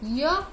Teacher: य के उच्चारण में जीभ का अगला भाग ऊपरी कठोर तालु के पास आ जाता है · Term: अर्ध स्वर